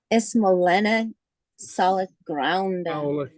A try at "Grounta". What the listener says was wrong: Grounta. A little nasal there. Grounta.